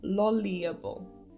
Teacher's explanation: Lolliable. The stress is on the 3rd syllable.